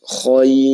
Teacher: Misalnya khair. Nah, ini ra-nya dibaca dengan tipis ya. Khair. Nah, ketika ra-nya sukun, kemudian sebelum ra ini ada ya sukun, dan sebelum ya sukun ini fathah, maka ra-nya dibaca dengan bacaan tipis atau tarqiq.